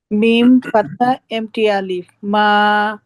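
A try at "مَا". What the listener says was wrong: আরেকটু লাইট মা মা মা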